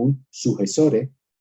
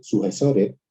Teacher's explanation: esa S intervocálica se ha aspirado igual que se aspira a la S final, ¿sí? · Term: aspiración de la S intervocálica